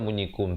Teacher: Rasulu alaikum, izhar syafawi, sempurnakan bunyi kum, terus masuk syahida.